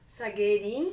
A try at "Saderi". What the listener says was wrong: Saderi. Ri. No, it's Ri. You don't have that.